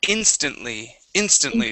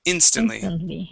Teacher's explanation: stress at the beginning